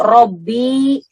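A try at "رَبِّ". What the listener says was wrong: Nggak panjang, Bu. Kalau panjang jadi mutada dia. Nggak pakai ya. Rob.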